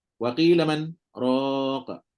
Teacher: Walaupun sekejap dengan nafas yang sama masih dikira sebagai saktah.